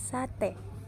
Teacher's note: vokal E tengah atas depan tak bundar pada kata sate, dan vokal E tengah bawah depan tak bundar pada kata nenek.